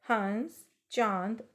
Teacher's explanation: अनुनासिक शब्दों का जब हम उच्चारण करते हैं तो जो हवा है वह नाक और मुंह दोनों से आती है